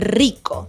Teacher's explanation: In rico, however, the r is in the beginning of the word and is not before a consonant either, so it keeps its trill sound